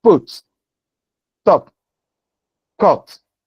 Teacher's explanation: All these words, the initial consonant sounds, which are all voiceless plosives. The first one is a bilabial plosive. · Each of them is aspirated when it is initial in a stressed syllable, when it is the initial consonant in a stressed syllable. In other words, when it is the onset in a stressed syllable. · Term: aspiration